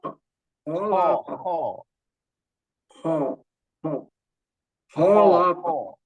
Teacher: Jadi kho itu satu makhraj dengan ghin, tenggorokan paling atas.